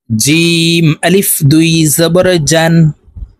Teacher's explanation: জিম হরফ জিহ্বার মধ্যখান থেকে উচ্চারণ করতে হবে